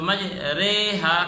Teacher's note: الف کو یا کی طرف جھکا کر پڑھ رہے ہیں تو مجریہا کر کے پڑھا جائے گا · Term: امالہ